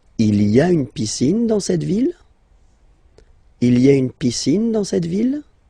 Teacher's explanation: don't forget to raise your voice at the end because it's a question.